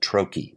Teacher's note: it's stressed on the first syllable and unstressed on the second syllable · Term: trochee